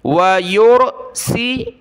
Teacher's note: را کو موٹا کرنا ہے، سین کو باریک پڑھیں گے